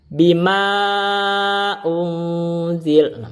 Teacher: Dia itu dipanjangkan dengan ukuran 5 harokat tapi jawaz, boleh, tidak wajib. Berarti boleh dipendek, boleh, maka boleh dibaca 2 harokat, boleh. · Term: mad jaiz munfasil